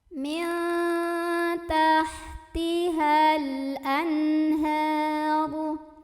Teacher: ada nun sukun yang ketemu sama huruf tenggorokan, huruf halqi yaitu huruf ha, maka nun sukunnya dibaca dengan jelas atau diidharkan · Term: idhar halqi